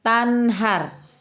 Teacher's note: tanhar, ada izhar halqi, tanhar gitu ya, tidak ada dengungan.